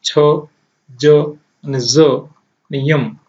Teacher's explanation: જેને તાલવ્ય તરીકે ઓળખવામાં આવે છે. બોલતા જીભ તાલુને સ્પર્શ કરે છે